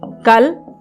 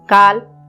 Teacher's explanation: परंतु हिंदी में जब हम शब्दों का उच्चारण करते हैं तो कुछ शब्द हमारा क्या होता है, दीर्घ स्वर के अंतर्गत चले आते हैं और कुछ शब्द हमारे ह्रस्व ध्वनि के अंतर्गत आते हैं। यानी उच्चारण करते समय कुछ शब्द हमारे कम समय में उच्चारित हो जाते हैं और कुछ शब्द क्या होता है, बहुत समय लेते हैं। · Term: ह्रस्व और दीर्घ स्वर